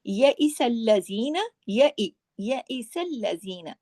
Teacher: تو یہ دیکھیے الیوم یئس الذین، یئس الذین، اب اس کو کہیں پر بھی اس میں بڑھانا نہیں ہے، تمام باریک حروف ہیں. یئس الذین، زی کو صرف 2 حرکات کھینچیں گے، وہ بھی یا مدہ کی وجہ سے، نون کو نہیں کھینچنا ہے، نون پہ صرف 1 حرکت ہے.